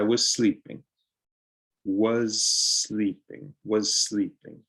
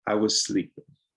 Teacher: you'll see that the s blends in